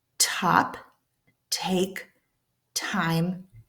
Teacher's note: we're not making any noise because it's a whisper. There's no vocal cord vibration. It's sh quiet.